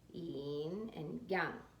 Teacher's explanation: Yang is fourth tone and yin is second tone